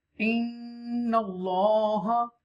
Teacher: you make gunna on nun mushadda